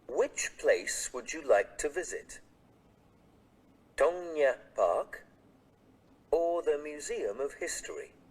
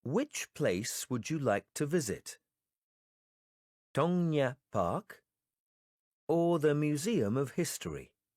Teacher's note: in the sentences with a lot of choices we will use the rising intonation for the first choices